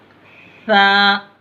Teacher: ज़बान की नोक को ऊपर वाले जो दांत हैं आपके, दो दांत, उसके किनारे से लगाना, उसके सिरे से लगाना, ऊपर बाहर से लगाना, इसे हल्का सा।